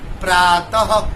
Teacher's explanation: अच्छा, इसको बोलने के समय आपके कंठ से ह का आवाज निकलता है, थोड़ा सा ह का थोड़ा सा अंश निकलेगा